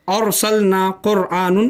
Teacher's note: रॉ साकिन है और उससे पहले अलिफ पर ज़बर है, तो यहाँ पर रॉ पुर होगी।